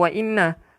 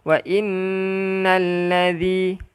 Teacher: zal ni kena keluarkan hujung lidah